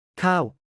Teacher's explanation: remember that it has a long vowel. It uses a falling tone.